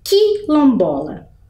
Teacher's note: Eu só ouço o som do Qui, quase como se ele não existisse ali a letrinha U, né? Fosse o Q e o I só.